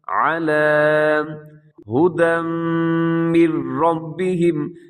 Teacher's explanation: لام جو ہے جس کے اوپر کھڑا زبر ہے اس کو میں کھینچ کے پڑھوں گا